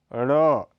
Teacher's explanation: यह अल्प प्राण घोष ध्वनि है, इसका उच्चारण उत्क्षिप्त मूर्धन्य माना जाता है।